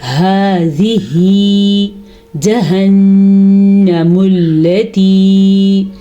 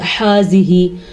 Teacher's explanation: یہ 2 آنکھوں والی ہا یا گول ہا دونوں کا ایک ہی مخرج ہے اور حلق کا آخری حصہ ہے اس کا مخرج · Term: ہا کے مخرج